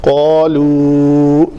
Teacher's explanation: یہ الف موٹا ہوگا کیونکہ قاف کے بعد آ رہا ہے